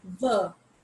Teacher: when i am pronouncing the word ver i bite my lower lip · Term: voiced sounds